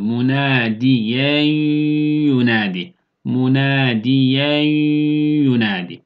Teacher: Yani katıyoruz ve bir elif miktarı tutarak ya da 1,5 elif miktarı tutarak idghamla birlikte sesi genizden getirerek gunne yapıyoruz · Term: idgam me'al-gunne